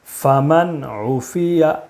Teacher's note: نون ساکن کے بعد حروف حلقی کے 6 حرفوں میں سے عین ہے، اس لیے نون ساکن کو بغیر غنہ کے جلدی پڑھیں گے